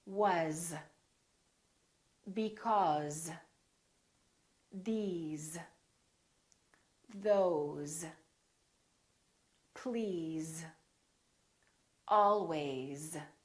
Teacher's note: very common words that we use all the time that are spelled with an S and pronounced with the Z sound